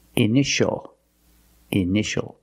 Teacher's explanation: And this word, initial or initials, more than one. We see T-I-A together, so the T is pronounced sh, sh. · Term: sh sound